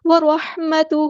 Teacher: ہمارے یہاں پہ ہیوی لیٹر ہے پورا ادا کریں گے، اور ہا پہ الٹا پیش ہے تو مد اصلی کریں گے